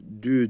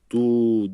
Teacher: bu ince harf olduğu için arkadaşlar dü diyoruz du demiyoruz